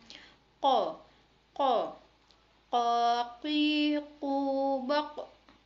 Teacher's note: huruf ko yaitu dikeluarkan dengan lisan menyentuh langit-langit bagian belakang